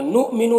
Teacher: حمزہ ساکنہ ہے واو کی شکل میں تو جھٹکا لگے گا